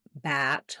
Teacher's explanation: more open front of the tongue down back of the tongue lifted